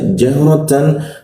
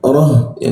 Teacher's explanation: jika dibaca jahratan, tapi jika dimatikan jadi ha ya